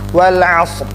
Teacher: Seperti juga kata wal asr, ro-nya tetap terlihat, jangan sampai wal as saja ya, berakhir di sod, wal as tetapi ada ro-nya walaupun sedikit, wal asr.